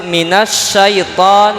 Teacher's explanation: dibacanya langsung Nun ke Sya minas syaiton Alif lamnya tidak dibaca hanya saja tetap tulisannya ada disebut al-talik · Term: alif lam syamsiah